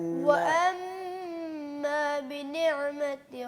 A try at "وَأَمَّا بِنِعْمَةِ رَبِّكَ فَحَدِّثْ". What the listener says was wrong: عین پہ قلقلہ مت کیجیے، عین کو مت ہلائیے. نعمتی ہلانا نہیں ہے، آپ نے اور ہلا دی. جی بنعمتی بنعمتی.